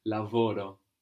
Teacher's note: it's just very important not to accent that ending we want the accent before